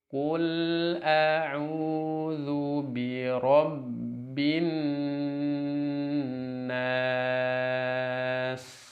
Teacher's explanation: Jadi setelah cukup tempo nun tasydidnya baru masuk ke mad arid sukunnya.